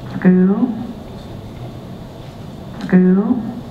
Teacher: People say tool and mule. But in the South, we can get this very fronted U vowel before L, which is characteristic.